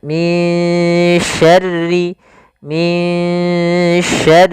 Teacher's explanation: suara Nun di sini kita samarkan kepada huruf syin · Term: ikhfa